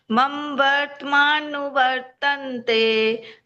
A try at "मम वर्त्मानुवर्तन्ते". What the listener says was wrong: 2 जगह आपके थोड़ी भूल हुई है। मम वर्तमान वर्तनते बोला है, ये मम नहीं बोलना है। मम मैं दोनों बराबर बोलने हैं। जैसे मैं पहला बोला है, ऐसे ही दूसरा मैं भी बोलना है। मम